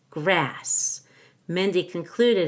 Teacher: I'm stressing grass the most it receives my primary phrase stress